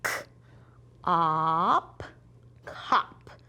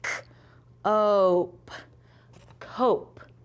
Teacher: short O says ah, long O says oh